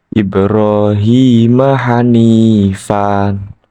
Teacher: dibaca panjang satu Alif atau dua harakat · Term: Mad Iwat